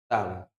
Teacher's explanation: दंत, दंत वाला वर्ग, दंत वाला वर्ग है ता। दांत से हम ता वर्ग का उच्चारण करते हैं